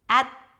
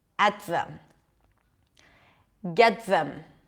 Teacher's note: you don't really hear the T you bring the tongue to touch the teeth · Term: held sound